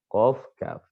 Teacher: Kalau qaf berarti dia naik ke bagian langit-langit atas yang paling belakang.